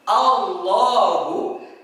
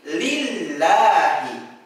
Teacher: Sahabat Al-Quran yang dirahmati Allah Subhanahu wa Ta'ala, pengucapan lafaz Allah itu ada 2 cara. Ada yang dibaca tebal seperti Allahu, ada juga yang dibaca tipis seperti lillahi.